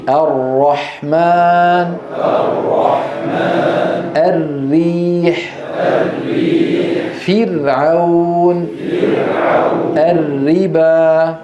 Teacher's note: الراء تخرج من طرف اللسان مع ما يحاذيه من اللثه قريبا من مخرج النون